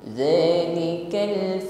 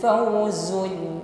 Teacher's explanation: Jadi di sini pengucapan huruf zal dengan huruf zai ya tentu beda. Huruf za diucapkan tanpa bunyi desis, sedangkan berikutnya huruf zai zu harus diucapkan dengan bunyi desis dengan sifat shafirnya.